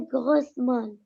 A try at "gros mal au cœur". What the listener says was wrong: prononce pas le S. Gros mal au cœur.